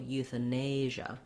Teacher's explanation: So this A remains the schwa, the sound, eutha. And then our stress here is on the nay syllable, euthanasia. So we have the diphthong A here. Make sure that you hold that long enough.